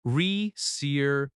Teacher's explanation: The word reservation has stress on the third syllable.